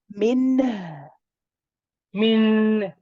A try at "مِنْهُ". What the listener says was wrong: Yes, what you want to do is your noon is fine, alhamdulillah. The ha is rahawa, so the ha should be longer. So you, however long you stay on the noon, stay on the ha longer.